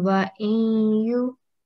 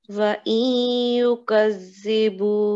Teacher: you need to have a gunna sound, nasal sound.